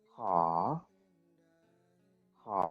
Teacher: Yang pertama ada ho high. Terus ada o panjang. Berarti ini rising tone.